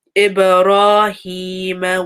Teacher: Again, a ba with a sukoon, so it has a bounce.